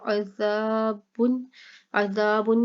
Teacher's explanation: عین حلق سے، زال نرمی سے، اور یہاں پر الف مدہ ہو رہا ہے، زا اس صرف اور صرف زا کو لمبا کریں گے.